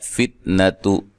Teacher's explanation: تا کو لمبا نہیں کرنا، نون کو لمبا نہیں کرنا